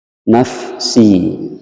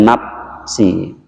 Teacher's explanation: a ini keluarnya dari perut bibir nge-root bibir bawah Va dengan cara memindahkan gigi atas ke bagian merah bibir bawah sehingga ada hembusan angin yang kencang